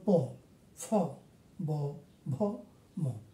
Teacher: এগুলি আমাদের যখন দুইটা উপরে নিচে ঠোঁট যখন একসাথে হয় তখন এগুলি উচ্চারণ করা যায়। উচ্চারণ করার সময় এগুলি আমাদের ঠোঁট স্পর্শ হয়। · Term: উষ্ঠ বর্ণ